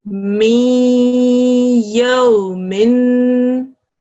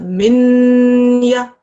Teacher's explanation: And there's a ya going on here, but we don't do it as a min ya. We blend the things together and we make a new sound which sounds like mi yo min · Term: assimilation